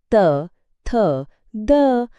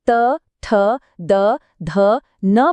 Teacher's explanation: जब हम त, ठ, द, ध, न बोलते हैं तो हमारी जीभ सीधी जाकर दांतों से टकराती है, इसलिए इसका उच्चारण स्थान दंत्य है।